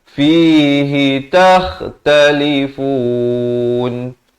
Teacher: Kha di hujung kerongkong ya. Dan diwaqafkan dengan ma'ari li sukun di sini kurang-kurangnya 2, 4 atau 6 harakat.